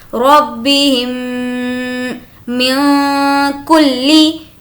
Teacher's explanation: میم ساکن کے بعد میم، تو اب یہاں پر ہو جائے گا ادغام شفوی، یہاں پر ہمیں غنہ کرنا ہے